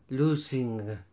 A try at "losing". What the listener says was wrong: It's a Z. Losing. It's not an S. Losing, confusing, amusing. How do you pronounce the S? That's correct.